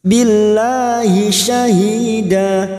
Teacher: Billahi syahida, syahida hi kasroh diikuti sukun 2 harokat mat tabi'i. Da fathah tanwin yang dibaca waqaf selain tak marbutah namanya mat iwat